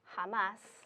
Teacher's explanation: But if you have a word like jamás, we're emphasizing the last syllable, and you need to have a written accent mark to show that.